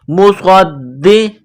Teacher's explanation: صاد میں سیٹی کی آواز پیدا کریں گے، صاد کو موٹا کریں گے ، صاد کو دال کے ساتھ ملانا ہے، دال میں سختی